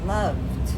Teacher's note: With the V, we feel the vibration.